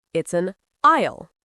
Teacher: The S is completely silent. It rhymes with I'll, like I will.